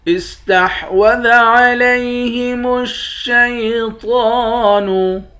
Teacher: تو کو موٹا پڑھیں گے، تو کے اوپر کھڑا زبر ہے